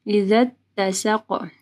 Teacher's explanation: ذا جو ہے تا کے ساتھ ملے گا اور قاف کو موٹا پڑھنا ہے، قلقلہ کرنا ہے۔